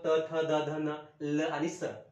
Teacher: सगळी ओळ दंत म्हटलं की जी दाताला लागते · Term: दंत्य